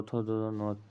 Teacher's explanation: सभी तो वर्ण का उच्चारण स्थान दंत हो जाएगा